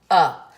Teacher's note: the UH sound is the schwa sound and it is the most common American vowel sound